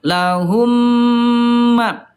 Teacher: idgam mimi ayah bunda dibaca dengan jelas dan ditahan ayah bunda dua ketukan lambat. Ah ya ini Bunda ketika mim bertemu dengan mim bibirnya dirapatkan ya dengan jelas terdengar mim dan ditahan.